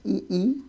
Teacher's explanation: ताल वर्ग मतलब जिसका उच्चारण तालु से होता है।